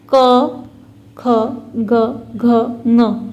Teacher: ये 5 जो है वो व्यंजन कंठ से बोले जाते हैं, अर्थात कंठ की सहायता से ये 5 वर्ण उत्पन्न होते हैं, इसलिए इन्हें कंठ वर्ण कहा जाता है।